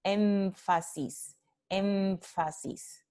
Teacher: esta nasal tiene exactamente el mismo punto de articulación que f, labio dental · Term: nasal labiodental